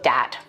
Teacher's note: using something like a D sound for where you see a written th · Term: th stopping